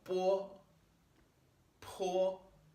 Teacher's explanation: I'm kind of putting like a o sound at the end